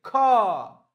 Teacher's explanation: इसको बोलने में ज्यादा वायु की जरूरत पड़ती है। ख इसमें हकार निकलता है